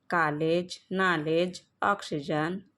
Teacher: यह आ तथा अ के बीच की ध्वनि है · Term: गृहित स्वर